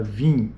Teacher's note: isso é um I nasal não é um I oral o i oral é i e o i nasal é in